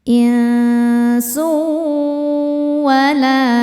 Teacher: Cara bacanya tanwinnya dileburkan ke wau dimasukkan ya kemudian dengungkan. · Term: Idgham di ghunah, idgham bi gunnah